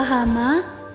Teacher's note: Selanjutnya fonem konsonan H yang direalisasikan dengan bunyi H pada contoh kata hama, di mana distribusi fonem H pada kata ini berada di awal kata. Fonem konsonan H ini masuk ke dalam bunyi laringal, yakni bunyi yang dihasilkan atas keterlibatan tenggorokan atau laring.